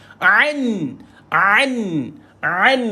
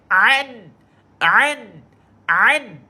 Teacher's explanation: Tolonglah ain. Tolonglah cuba untuk pergi kat tengah kerongkong. Jangan pergi hidung. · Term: makhraj ain